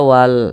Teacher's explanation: Maka huruf tanya ini dibaca panjang namanya maabii panjangnya itu dua harakat atau kira-kira dua ketukan